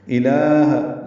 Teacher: الہ لام کو 2 حرکات لمبا کیا، ہا کو جلدی پڑھیں گے، اقصی حلق سے نکالیں گے